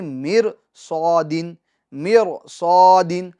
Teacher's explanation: ایک ہی کلمے میں را ساکن سے پہلے زیر اصلی ہو اور اس کے بعد حروف مستعلیہ ہو تو را ساکن کو پور پڑھیں گے، جیسے میر صادن، میر صادن۔